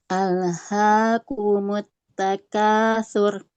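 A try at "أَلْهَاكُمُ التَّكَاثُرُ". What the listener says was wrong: Baik, rohnya tebal Ibu. Alhaakumut takatsur. Kemudian hati-hati di lam jangan mantul, jangan ale.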